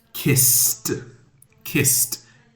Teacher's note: When we hear a kiss, there's no vibration. It's it's voiceless. There's no voice like the D words. · It's ed, but it has the T sound.